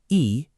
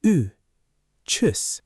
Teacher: Let me give you a little pronunciation moment here, because tschüss has that U sound, which doesn't exist in English. The U is like saying E, but you round your lips into an U shape at the same time.